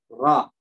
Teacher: Namanya punggung ujung lidah. Tempat keluarnya huruf ro. Ya, karena lidahnya dibalik begini, jadi nggak nempel.